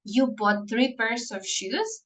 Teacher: a statement with a rising intonation often function as questions